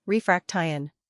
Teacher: Break it into parts, refraction. The stress is usually on the second syllable.